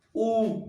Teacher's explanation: उच्चारण करने पर होठों का आकार लगभग गोल सा हो जाता है, यानी वृत्त के जैसा हो जाता है। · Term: वृत्ताकार